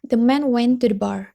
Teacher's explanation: in this utterance no beats fall on the preposition to